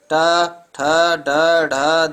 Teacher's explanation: मूर्धन्य व्यंजन जिनका उच्चारण मूर्धा मुख की छत से होता है।